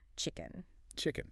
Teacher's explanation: The CH and the K stop the breath in your mouth.